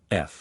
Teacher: by pressing the upper teeth against the lower lip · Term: the F